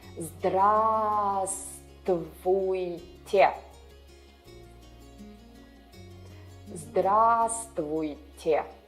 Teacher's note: The first V here is silent.